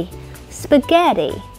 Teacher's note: trong tiếng Anh Mỹ, âm t lại biến thành âm d, ví dụ như di, spaghetti.